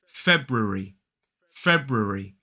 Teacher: 3 syllables, the stress is on the first. So that first syllable is f-e-b, feb, feb.